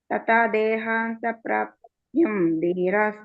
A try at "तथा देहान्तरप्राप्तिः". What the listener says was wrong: तथा देहान्तरप्राप्तिः धीरस्तत्र न मुह्यति. ಅಲ್ಲಿ ಪ್ರಾಪ್ತಿ ಅಲ್ಲ, ಪ್ರಾಪ್ತಿಹಿ ಅಲ್ವಾ ಅಲ್ಲಿ ಇರೋದು. ತಥಾ ದೇಹಾಂತರ ಪ್ರಾಪ್ತಿಹಿ ಧೀರಸ್ತತ್ರ ನ ಮುಹ್ಯತಿ.